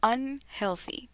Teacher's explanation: Aquí tenemos el sonido del sandwichito que les digo en la parte del the y tenemos el estrés en el un